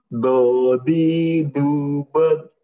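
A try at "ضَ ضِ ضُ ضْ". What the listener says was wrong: Kan nyasar, kalau nyasar huruf dal tuh gitu, do di kedengarannya do, bukan bo, seperti itu ya.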